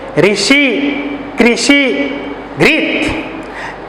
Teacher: तो हिंदी में जो उड़िया में जो रू है उसका उच्चारण उड़िया जैसा नहीं होगा, री जैसा होगा